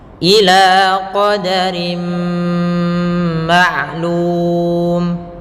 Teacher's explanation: Karena pada dasarnya fathatain kasratain itu adalah bunyi nun yang dimatikan. Qadarin ketemu dengan mim, maka suara nunnya diganti dengan huruf mim, dimasukkan langsung ke huruf mim, maka dinamakan dengan idgham.